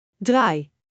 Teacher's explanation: It begins with, an open ah, stretches smoothly into, aa, and finishes with 'i'. Your mouth, opens wide, then gently, narrows into a soft smile.